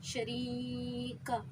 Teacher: یا ساکن ہے، اس سے پہلے زیر ہے تو یا مدہ، اسے بھی ہم ایک الف کی مقدار کھینچیں گے